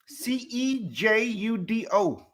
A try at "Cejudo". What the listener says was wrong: See, you didn't say the J in that. That's a W. That's not a J.